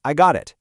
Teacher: Native speakers use this quick, easy bounce of the tongue off the roof of the mouth for phrases like, "I got it." If you try to say, "I got it." with high tension, it just sounds stilted. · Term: American flap T